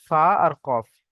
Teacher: ফায়ে এক আলিফ টান আর কফে তিন আলিফ টান, আর কফ উচ্চারণের সময় কি করতে হবে, মুখ গোল করে পড়তে হবে, তাই না?